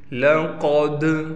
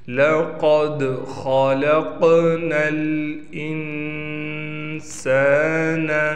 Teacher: قاف کو موٹا کرنا ہے، دال پر قلقلہ کریں گے